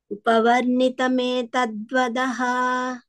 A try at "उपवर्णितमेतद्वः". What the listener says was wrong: वदः no only वः